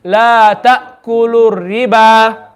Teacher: So this ra mushaddad, it has a kasra, so it's going to be empty mouth.